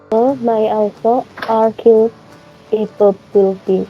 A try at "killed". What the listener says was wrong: Ed-nya harus agak ketara.